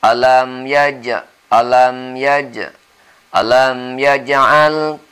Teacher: Ada huruf qalqalah yaitu ja atau jim. Tetapi qalqalahnya di sini adalah qalqalah yang sagir, yang ringan, karena dia berada di tengah-tengah kalimat. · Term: Qalqalah yang shaghir